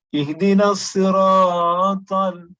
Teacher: You lengthen the harakat to more than 2, which is not permissible.